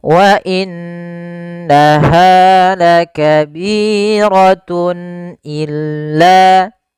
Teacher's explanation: Kemudian pada lafal tun illa di sini ada izhar halqi yaitu suara tanwinnya harus dibaca dengan jelas karena ketemu dengan huruf hamzah. Dan ini kita namakan dengan izhar halqi.